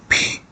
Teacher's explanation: as with the English P but more fully aspirated